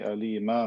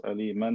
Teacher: See, I say alima, not aliman, because if I stop on tanween fatha, it turns into alif. We say this is mad iwad.